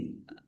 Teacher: Lamnya dibaca dobel, ada tasdidnya ditekan biar tampak dobel. Likulli ummatin mim tasdid dibaca ghunah atau mendengung.